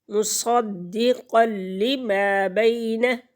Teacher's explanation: بِإِذْنِ اللَّهِ مُصَدِّقًا لِمَا بَيْنَ، قاف موٹا پڑھیں گے اور نون تنوین کے بعد لام حروف یرملون میں سے آ گیا تو یہاں پر بلا غنہ ادغام ہوگا۔ مُصَدِّقًا لِمَا بَيْنَ، ما، میم کی آواز کو ناک میں نہیں لے کے جائیں گے۔